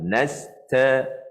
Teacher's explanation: Masa sebut nasta tu, anginkan ta tu. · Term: huruf hamas